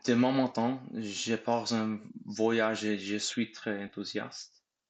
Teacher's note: try to connect the words a bit more smoothly so it flows better. For instance, between pars and en.